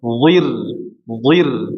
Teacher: huruf d ketika kasrah ditebalkan sempurna